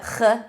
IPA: x